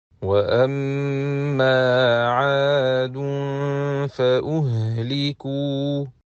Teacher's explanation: we have to hide noon sakina of tanween with prolonged ghunna at the point of articulation of the following letter, which in this case is letter fa.